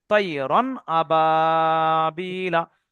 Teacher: রন উচ্চারণ হয়েছে কিন্তু রন বলে আওয়াজটা নাকে ধরে রাখা যায়নি